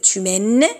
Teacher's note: Le E, on ne le transcrit pas parce que on l'entend pas. · M ça reste le même. humaine, AI, ça se transcrit comme E, comme EST, donc c'est la même chose, le son ouvert, le E, le son ouvert, humaine.